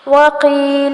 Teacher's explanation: وقیل قاف ہے کاف نہیں بنانا